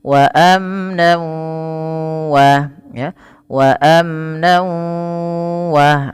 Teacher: Kalau gunnah bi gunnah harus disertai dengan penahanan pada lafal yang dimasukkan. Ketika tanwinnya masuk ke waw, maka bunyi wawnya ditahan. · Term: idgham bi gunnah